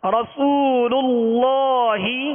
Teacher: پہلا والا لام جو ہے یہ باریک ہے